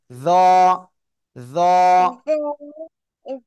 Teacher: জিব্বার আগায়, দুই দাঁতের আগায় লাগান, লাগিয়ে মোটা আওয়াজে উচ্চারণ করতে হবে